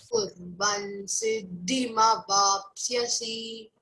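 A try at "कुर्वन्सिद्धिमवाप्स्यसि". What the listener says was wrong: See again, C is not long vowel. There is no bar upon the I of vapsyasi. Next to that I is there, there is no bar upon that. That means you cannot elongate it, okay?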